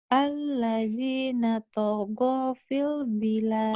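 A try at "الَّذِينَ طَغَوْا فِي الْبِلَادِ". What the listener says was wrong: Togo. Nah ini lin ya. Togo. Jadi W-nya berasa. Nggak panjang tapi ada bersisa. Kayak A dan I, A dan U, au gitu ya. Lin itu. Lin itu kalau dalam bahasa Indonesia diphthong. A dan U kan nggak mungkin panjang jadi au.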